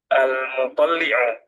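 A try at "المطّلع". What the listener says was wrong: Ini ternyata taknya yang tasydid yang to'nya ya. Al-muttali'u.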